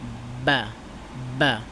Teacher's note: বা উচ্চারণ করতে দুই ঠোঁট একসাথে মিলবে ঠিক আছে বাতাসটা বন্ধ হবে